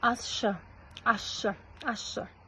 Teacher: Ш әрпі, с әрпін ш әрпіне ықпал жасап өзгертіп тұр. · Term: Кейінді ықпал